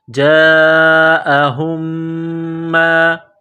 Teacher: تو ہا کو میم کے ساتھ ملانا ہے، میم پر غنہ کریں گے